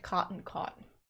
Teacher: I pronounce those different cotton caught. So there's a merger in the low back vowels that some Americans have and some Americans don't, and I do not.